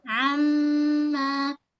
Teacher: huruf ain lunakkan tengah ke rongkong